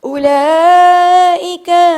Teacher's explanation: او کو نہیں کھینچنا، لا کو کھینچنا ہے